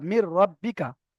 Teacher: এই নুন সাকিনটা গুণনা হবে না, প্লাস নুন সাকিনটা এই রয়ের সাথে মিলে যাবে। যদি নুন সাকিনটা রয়ের সাথে মিলে যায়, তাহলে নুন সাকিনটা আর থাকছে না। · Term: নুনটা আর ধরা হচ্ছে না